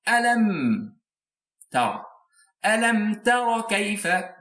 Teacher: You'll pronounce meme very clearly without any ghunna, without any stopping, without any extension. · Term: izhar clarification